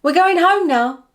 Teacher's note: It sounds like the word weir. When this contraction is said quickly in fast speech, it often loses the schwa sound at the end and becomes wi